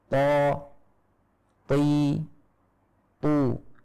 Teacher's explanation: Jadi ini walaupun kasroh dan fathah, dhammah semuanya tetap tebal. Walaupun tebalnya ketika kasroh tentu saja lebih ringan daripada tebalnya ketika fathah atau dhammah